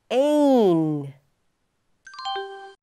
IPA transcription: eɪn